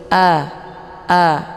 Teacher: Kemudian a ini dibaca jelas ya, a jangan a ya, tapi a. Posisi pangkal lidahnya tidak boleh naik ke atas. Jadi dia lurus.